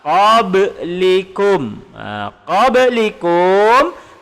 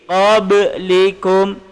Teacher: Ba adalah huruf qalqalah. Ba adalah huruf qalqalah. Dia berada di tengah dan dia bertanda mati. Jadi kita bacanya kena lantun. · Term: qalqalah sughra